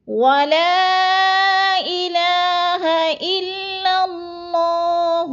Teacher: الا باریک، اللہ موٹا پڑھا جائے گا